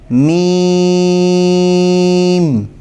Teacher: اس حرف کی جو آواز ہے وہ باریک پتلی آواز ہے، موٹا نہیں پڑھنا اس کو، اور اس حرف کے ادا کرتے وقت ناک میں سے بھی آواز نکلتی ہے